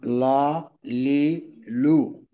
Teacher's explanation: জিহ্বার আগার কিনারা সামনের উপরের দাঁতের মাড়িতে লাগবে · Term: লাম